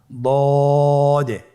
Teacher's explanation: দদ হারাফটি উচ্চারণ করার সময় অবশ্যই তিন আলিফ টেনে পড়তে হবে